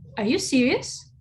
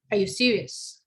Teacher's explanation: the first one was a rising tone and the second one was a falling tone